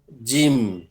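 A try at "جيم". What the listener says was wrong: জিম টান দিয়ে এখানেও।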